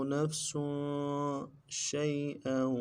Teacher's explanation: شین کو یا کے ساتھ ملانا ہے، یا لین ہے، بغیر کھینچے پڑھیں گے